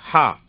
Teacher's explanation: இந்த ஹா எப்படின்னு சொன்னா தொண்டையில இருந்து வரணுங்க. ஹா தொண்டையில இருந்து வரணும் உச்சரிப்பு.